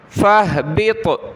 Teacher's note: قال فاہبط، فہا زبر فہ، با طا زیر، بط، قلقلہ ہوگا طا پر اور طا کو موٹا بھی کریں گے